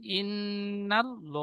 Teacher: আল্লাহ শব্দের ডানদিকে জবার এসেছে তাই আল্লাহ লামকে পুর অর্থাৎ ল পড়তে হবে লামের উপরে খাড়ার জবার এসেছে খাড়া জবার আলিফ মাদ্দার সমতুল্য আলিফ